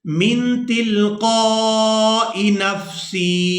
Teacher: हमने हमजा को अदा करना है, या को अदा नहीं करना। और जब हमजा को अदा करेंगे तो इसको हमने खींच कर भी अदा नहीं करना, बल्कि इसको बगैर खींचे ही अदा करेंगे।